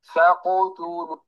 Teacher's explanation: لا يضم شفتيه مبكرا عند القاف، الضم للتاء، فإن لم تصل يا أخي إلى التاء فلا تضم. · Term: qalqalah